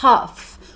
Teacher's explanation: Em algumas outras partes da Inglaterra, você pode ouvir como half, um inglês um pouco mais fechado, um A um pouco mais fechado